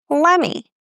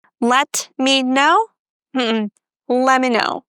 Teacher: So in this phrase, we can drop the T and say lemme.